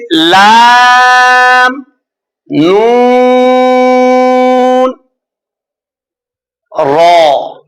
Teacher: जबान का किनारा और एक दाहिक से सनाया तक के मसोड़ों से अदा होता है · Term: हुर्फ तरफिया